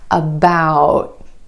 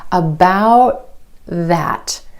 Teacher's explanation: you hold the tip of your tongue against the ridge behind your top front teeth and you don't release any air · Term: held T